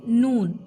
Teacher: Then यहाँ पे same नून क्या है, ऊपर के मसोड़ों को टच होगा, मिडिल में नून, ठीक है। सामने की जुबान की टिप ऊपर के मसोड़ों को मिडिल में लगेगी तो नून मखरज निकलेगा